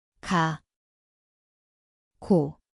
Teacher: Mjesto je stražnji dio jezika.